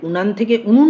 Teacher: প্রগত স্বরসঙ্গতি যেখানে পূর্ববর্তী স্বরধ্বনির প্রভাবে পরবর্তী স্বরধ্বনি পরিবর্তিত হচ্ছে